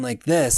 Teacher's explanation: And Gaxna, the only voice that I did differentiate in the first book, she's got vocal fry. So she's always talking like this.